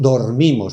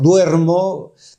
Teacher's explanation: porque dormimos es átona y duermo es tónica